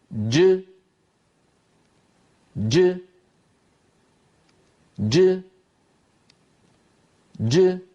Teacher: انطلاق الصوت بعد انحباسه في الحرف الشديد المجهور · بداية الجيم مخرج مقفول تماما لأن الصوت شديد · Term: جيم مقلقلة